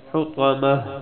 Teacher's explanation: بریک طوا موٹی طوا، حطمہ آخر میں پھر ہا کی آواز، تا سے جب وقف کریں گے تو تا ہا بن جائے گی